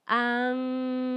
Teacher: Puedes sentir cómo la parte de atrás de mi lengua se eleva y toca el paladar blando. La NG es una consonante nasal.